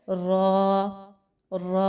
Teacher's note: ऐसी र को पुर पढ़ा जाता है अब क्योंकि यहां पे र पर जबर लगा के पढ़ा जा रहा है र अलिफ तो इसको पुर पढ़ा जा रहा है